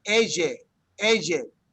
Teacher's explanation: it almost sounds like that yes sound is like a Z, like a Z, ella.